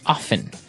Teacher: some people like to pronounce often, right? They kind of leave out the strong T sound. Well, other people say often.